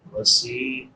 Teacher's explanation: سین کے بعد یا مدہ ہے، یا ساکن ما قبل کسرہ یعنی زیر ہے، تو اس کو ایک الف کے برابر لمبا کریں گے